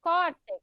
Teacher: A penúltima é a mais forte, então é paroxítona. Paroxítona terminada em X, leva acento.